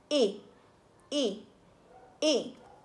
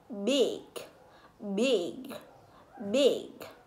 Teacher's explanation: Thứ nhất, về mặt lý thuyết, âm y trung tính có khẩu hình miệng giống như chữ, giống như âm e trong tiếng Việt này, phát ra âm y có độ dài ngắn, lực mạnh dứt khoát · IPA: /i/